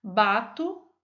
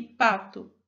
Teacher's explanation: A diferença entre sonora e surda também pode ser percebida na pronúncia de duas consoantes do português falado no Brasil, no B, que é sonoro, e no P, que é surdo. Repita: bato e pato, também pressionando a mão levemente no pescoço.